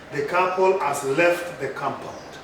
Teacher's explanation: this is a statement of fact it is called declarative statement it attracts a falling intonation